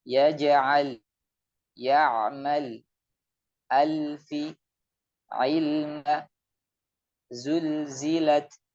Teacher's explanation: Lidahnya nempel di langit-langit atas bagian depan, suaranya mengalir lewat pinggirnya. · Jadi di mana lidah itu menempel, disitulah titik mengalirnya suara. Adapun lam ini, dia benar-benar suara itu mengalir dari tepi lidahnya. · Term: sifat inhiraf